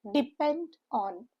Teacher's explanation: Again a phrasal verb depend on. stresses on the second syllable